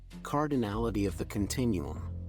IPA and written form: ˌkɑːrdɪˈnælɪti əv ðə kənˈtɪnuəm (Cardinality of the continuum)